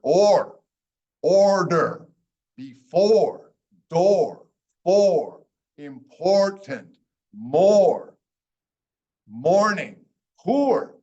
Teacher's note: So it's when you have OR, it generally just sounds like the long O, but it has an R at the end.